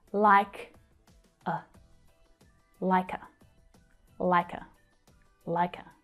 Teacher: But the k sound from the end of like joins with the vowel schwa.